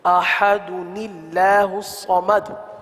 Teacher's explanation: وصل میں، یعنی ملا کر پڑھنے کی صورت میں حمزہ وصلی کو گراتے ہوئے تنوین کے نون ساکن کو زیر دے کر چھوٹا سا نون لکھ دیا جاتا ہے، اسے نون کتنی کہتے ہیں۔